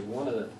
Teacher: One of them becomes like one word, yeah? It runs together.